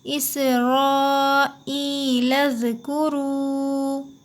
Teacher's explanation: لام کو ملائیں گے زال میں